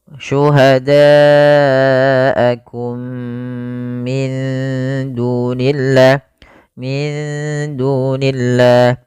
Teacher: mim mati bertemu dengan mim. Ini merupakan bacaan idgham mimi, yaitu mimnya dimasukkan kepada mim yang kedua dan ditahan